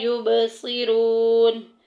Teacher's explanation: واو ساکن پیچھے پیش آ گئی، واو مدہ کا قاعدہ جاری ہو رہا ہے